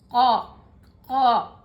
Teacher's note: जबान हल्की सी ऊपर उठी लेकिन आवाज़ पीछे से आई, क। जबान हल्का सा ऊपर हुआ, गोल हुआ, होंठ भी गोल हुए, आवाज़ पीछे से आई